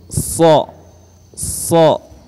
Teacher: huruf sha ini mempunyai sifat isti'la, tebal. Ya, ketika membacanya mulut harus dimoncongkan.